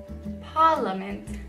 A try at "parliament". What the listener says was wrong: You said it like an American. Parliament.